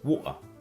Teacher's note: the T in water, as well as the T in Gretel, is generally pronounced as a glottal stop in Cockney English